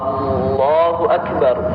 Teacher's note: Ya, kemudian sedikit kami ingin sampaikan tentang pengucapan takbir, ya, karena kami sendiri pernah mendengarkan, ya, seseorang itu ketika mengucapkan takbir memanjangkan hamzahnya lafzul jalalah